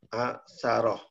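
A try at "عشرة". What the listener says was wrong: Tidak diputus, langsung. Asyarah. Disambung begitu. Ain, itu ain.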